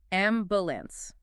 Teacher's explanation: placing the heavy stress on the very first syllable